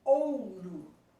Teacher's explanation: o U quase que desaparece. O O é muito mais forte. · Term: decrescente